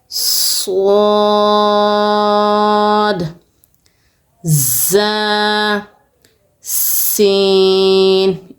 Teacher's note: ان تینوں حروفوں کو آپ نے سخت بھی ادا کرنا ہے اور ساتھ میں آپ کی سیٹی کی آواز سے بجنی چاہیے۔ جب ہمارے زبان کی نوک اوپر دانتوں کے اندرونی کنارے سے لگے گی تو یہ تینوں حرف آپ کے سیٹی سختی کے ساتھ ادا ہوں گے۔ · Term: سیٹی سختی والے